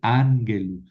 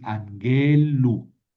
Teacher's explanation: El genitivo es una terminación larga, entonces no puedo decir angelu, tendré que decir anguelu, tendré que mover el acento